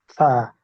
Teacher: সা জিহ্বার আগা সামনের উপরের দুই দাঁতের আগার সাথে লাগবে। সা এক আলিফ টেনে পড়তে হবে।